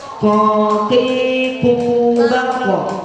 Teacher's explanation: Jadi pangkal lidah kita terangkat, dia mendekati yang berdaging, bagian yang lembek ya. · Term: huruf ko